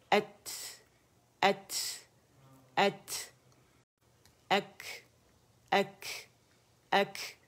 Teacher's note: ہمس کا کیا مطلب ہے کہ آواز چلتی ہوئی باہر محسوس ہو آپ لوگوں کے ہاتھ پہ جب آپ اسے ادا کریں گے